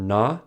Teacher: For na, the air comes through the nose.